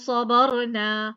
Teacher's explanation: सौद मुफख्खम, बा लाइट, फिर रा मुफख्खम, ठीक, मुफख्खम का मतलब भारी होना, पुर होना, ठीक है।